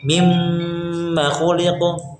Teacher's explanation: Nggak panjang ma-nya. Dia cuma ya ditahan saja